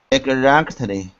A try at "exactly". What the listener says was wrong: Exactly. Yeah, you got to work on the Z's, like zoo, z, Zach.